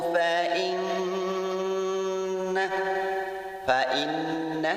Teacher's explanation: Cara membacanya bunyi in dimasukkan ke nun sambil ditahan dan mendengung selama 2 harokat. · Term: gunnah musyaddadah